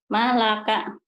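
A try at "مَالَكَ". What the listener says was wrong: Kalau kap ini panjang Bu. Malaka.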